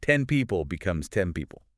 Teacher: It closes the lips early, and acoustically, that N turns into an M. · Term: assimilation